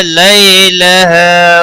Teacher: لئی یالین ہے، تھوڑا نرمی کے ساتھ کھینچ کر ادا کریں گے۔ لہا الف مدہ ہے، 1 الف کے برابر کھینچ کر پڑھیں گے۔